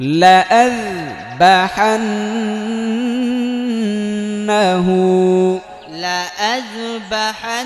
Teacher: নুনের মধ্যে এটা হচ্ছে ওয়াজিব গুন্নাহ। কারণ হচ্ছে কি হরকতের পরে নুনে তাসদীদ, নুন অথবা মিমে তাসদীদ হলে এটা ওয়াজিব গুন্নাহ হয়।